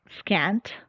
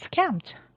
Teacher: the place of articulation of the nasal consonant has been changed to conform with that of the following plosive